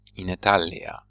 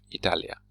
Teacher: when we put it after in, it receives a long vowel. In Italia instead of Italia.